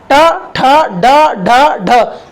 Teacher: इसमें हमारी जीभ हल्की सी फोल्ड होती है और गड्ढे से टच करती है और झटके के साथ बाहर जाती है। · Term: मूर्धन्य व्यंजन